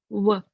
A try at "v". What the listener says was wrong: This is w. This is the W sound. You're saying the w sound. Now let's say the v sound. bottom lip. So you can bite your bottom lip.